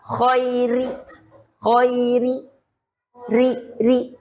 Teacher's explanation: Kalau tafkhim ro, kalau tipis ri tarkik.